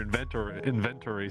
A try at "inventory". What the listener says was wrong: Inventory. It sounds like you're trying to say event, but But